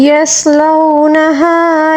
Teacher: یَصْلَوْنَهَا يَوْمَ الدِّینِ، صاد کو پر پڑھیں گے